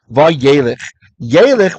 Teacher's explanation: Yaleh, what happens is the verb halach loses that beginning hey